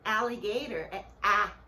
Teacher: A gente faz um som de E e abre a boca pro A.